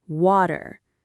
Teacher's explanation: Notice that the T sound in the middle becomes a soft D sound, almost like a little flap of the tongue. We call that a flap T.